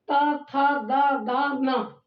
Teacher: ता वर्ग का उच्चारण जब होता है तो दांत में जीभ स्पर्श करता है